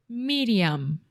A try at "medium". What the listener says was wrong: So when she said medium. Medium. And this is a very common mistake for all Brazilians and Portuguese speakers, not to close your mouth with any word that ends with an M. So in English, when we have a word like medium, at the end we close our mouth completely, our lips are touching together.